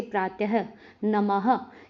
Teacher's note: Next आता है विसर्ग। विसर्ग का उच्चारण हल्के ह की भांति प्रतीत होता है